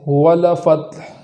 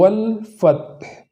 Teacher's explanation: جو لام ساکن ہے تو اس کو متحرک ہو جانے سے بچانا ہے